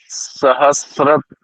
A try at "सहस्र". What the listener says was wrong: फिर त्र बोल रहे हो, फिर त्र क्यों हो गया? स्र बोला था, त्र क्यों हो गया? फिर देखो त की आवाज आ रही है ना आपकी आवाज में, जबकि इसमें त नहीं है। आप बोल रहे हो सहस्त्र, त की आवाज आ रही है ना यहाँ?